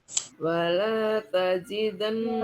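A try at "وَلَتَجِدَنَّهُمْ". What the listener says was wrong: Walanya pendek, Bu. Walata pendek.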